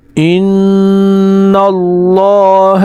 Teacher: نون پر غنہ ہوگا اور لفظ اللہ کو پر پڑھیں گے